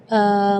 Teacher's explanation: Mad di situ kita harus panjang membacanya 6 harakat karena di situ hukumnya mad lazim kalimi mutsaqqal, jadi membacanya waladhdallin 6 harakat.